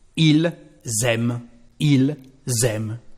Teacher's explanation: Well, we've got an S here, so, of course, we are going to have a liaison. And this liaison, because it is an S, it is to be the sound Z